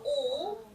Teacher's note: your tongue is on the back of your teeth still and you've raised the back of your tongue to hit your velum